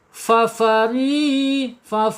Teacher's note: ujung gigi atas menyentuh perut bibir bagian bawah. Fari tipis tarqik ya.